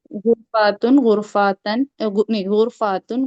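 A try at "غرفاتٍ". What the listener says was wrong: तन नहीं होता। याद रखे, समावतुन समावतन कभी नहीं होता,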